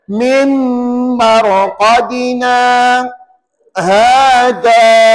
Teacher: Kita berhenti sekejap. Berhenti sekejap, sekadar 2 harakat. Tahan nafas. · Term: sakta